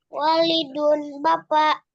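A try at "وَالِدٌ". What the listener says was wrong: Wa-nya panjang. Walidun wa-nya panjang karena kalau pendek artinya adalah anak.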